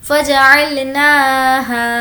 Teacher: فجعلناها, نون کو کھینچیں گے کھڑا زبر.